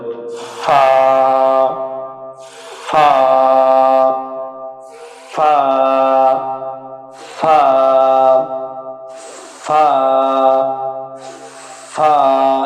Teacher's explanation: নিচের ঠোঁটের পেট সামনের উপরের দুই দাঁতের আগার সাথে লাগিয়ে বাতাস বাহির করে একালিপ টেনে পড়তে হবে